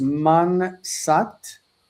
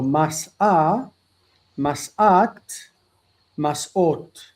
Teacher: the nun assimilates into the shin, into the sin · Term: assimilation